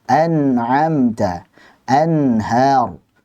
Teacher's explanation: nun tersebut dibaca dengan jelas tanpa gunnah yang dipanjangkan saat bertemu dengan salah satu dari huruf-huruf al-halq, yaitu hamzah, ain, ha, ghain, kha. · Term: izhar halqi